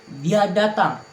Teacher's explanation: Saya mengucapkannya dengan nada naik karena ingin memastikan apakah dia benar-benar datang.